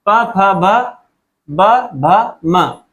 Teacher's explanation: इनको बोलते समय हमारे दोनों होठ आपस में मिलते हैं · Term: ओष्ठ्य ग्रुप